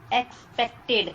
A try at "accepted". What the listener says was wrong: अरे नहीं मैडम, पै के बाद में सी आ रहा है क्या? पी के बाद में सी आ रहा है क्या?